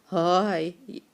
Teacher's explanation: ह जो है अपने हल्क के एंड वाला हिस्सा जो है, जो हमारी गर्दन से मिलता है जाके, वहाँ से निकलता है ह